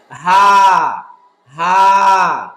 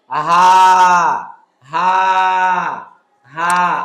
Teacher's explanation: এটা হলো মাখরাজগত পার্থক্য। আর ছোট হা বা নরমাল হা যেটা, সেটা হলো কণ্ঠনালীর নিম্নভাগ থেকে সহজে কোনো প্রেসার দেওয়া, বাতাসে চাপ দেওয়া লাগবে না, সহজে বলতে হবে হা, হা, যেটা বাংলায় অনেকটা হয় আকারের মতো, হা, হা, হা।